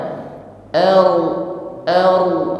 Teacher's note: ada getaran di ujung lidah dan getaranya tebal lagi bukan sekedar bergetar